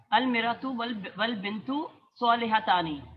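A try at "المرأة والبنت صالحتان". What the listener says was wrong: شاباش، نہیں صحیح کہا ہے آپ نے، کنفیوز نہ ہو۔ المرأۃ، بس میم کو زبر دے دیں، المرأۃ والبنت صالحتان، عورت اور لڑکی دونوں نیک ہیں۔ تو یہاں پر دیکھیں، عورت اور لڑکی یہ دونوں مبتدا ہو اور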